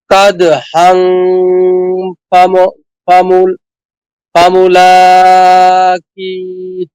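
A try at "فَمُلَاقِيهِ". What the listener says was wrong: জি, মাশাআল্লাহ।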